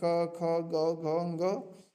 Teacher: क के जितने भी वर्ण हैं क, ख, ग, घ, घ, ये सारे कंठ से बोले जाते हैं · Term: कंठ वर्ग